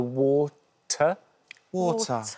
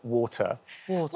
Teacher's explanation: unlike your accents I don't have the r at the end of that vowel